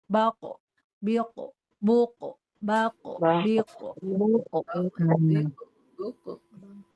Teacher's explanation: Karena tertahan nafas dan tertahan suara jadilah dia mantul qalqalah.